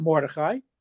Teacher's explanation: put the emphasis on the first syllable as opposed to the last syllable